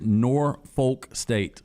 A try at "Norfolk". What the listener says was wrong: Well, the locals don't really pronounce the L. Yeah, that's how they do it, and it's really uncomfortable.